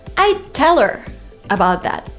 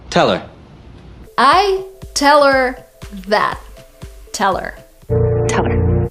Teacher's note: we don't have her we have one word that is teller